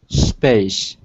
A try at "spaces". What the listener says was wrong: And because you have an ES at the end, Pronounced spaces. Spaces. Here's a link about pronouncing those S endings. When is it a S and when is it is?